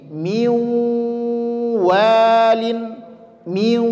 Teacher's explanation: Atau nun sukun ketemu waw, melebur huruf nun ke huruf waw sehingga bunyinya menjadi miwalin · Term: idgham bi gunnah